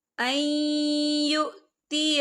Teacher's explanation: ما كان لبشر ان یؤتیہ اللہ الکتاب، یہ دیکھیں این یہاں نون ساکن ہے، نون ساکن کے بعد جو ہے یا آ رہا ہے، اور یا جو ہے حروف یرملون میں سے ہے، تو یہاں پر ادغام ہوگا، تھوڑا سا غنّے کے ساتھ پڑھیں گے